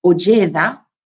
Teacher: the underlying high tone on the first vowel of the long vowel does double on the next one. And because the next one is on the penultimate position of a phonological phrase, it has a sort of falling pitch.